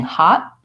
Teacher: my tongue doesn't come down to release the air from T I'm just saying hot that same thing with correct correct ly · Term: stop T